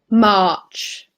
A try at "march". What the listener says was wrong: March. Yeah, it's just a little bit longer. The sound is longer.